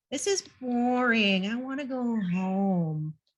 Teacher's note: like you're speaking with your nose your nasal voice nasal sounds tend to be sort of whiny